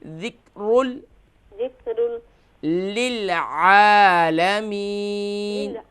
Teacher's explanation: یہاں پر قاف نہیں ہے بلکہ کاف ہے تو اس صورت میں ہم یہاں قلقلہ نہیں کریں گے